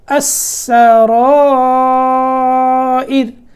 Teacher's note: یہاں سین کو باریک کر کے اگلا را جو ہے وہ موٹا کرنا ہے